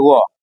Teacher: व हो गया आपको दंत और ओष्ठ दोनों से